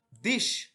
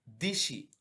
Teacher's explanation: স্বরধ্বনির প্রভাবে অপর স্বরের পরিবর্তন ঘটলে তাকে স্বরসঙ্গতি বলে থাকে যেমন দেশী হয়ে গেল দিশী অর্থাৎ শেষের ইর প্রভাবে শুরুর এ ই তে পরিণত হয়েছে